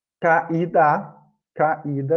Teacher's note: tanto nesse exemplo do caída, como no caso do país, o I, ele é a sílaba tônica